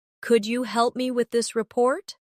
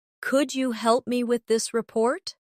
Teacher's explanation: Pay attention to the stress. The words help and report carry more weight in the sentence.